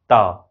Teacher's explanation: त बोलते समय हम दांत से त, जीभ का ये आगे वाला हिस्सा और त दांत में रोक दिए, हवा को वहीं रोक दिए और फिर छोड़ दिए, तो उसका उच्चारण स्थान, त का उच्चारण स्थान वहीं दंत हो।